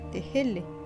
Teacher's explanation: une sorte de fricative avortée, l'équivalent de notre h aspiré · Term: Le h